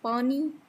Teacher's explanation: Then p sound, it is stop voiceless, it is not aspirated.